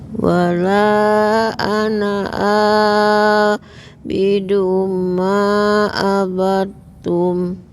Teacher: Ada dal sukun ketemu huruf ta. Ini diidghamkan.